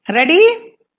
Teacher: Again, in a rising tone, it's a question.